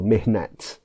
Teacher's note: the letters called the ta marbuta in Arabic will end up as a normal T sound in Persian, ending in a T sound.